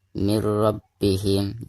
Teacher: bilagunnah yaitu produksinya namaka cara membaca nun sukun di sini itu harus dimasukkan langsung ke huruf ro yang ada didepannya dengan cara tidak didengungkan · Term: idgam bilagunnah